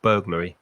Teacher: And burglary. Stress the first syllable.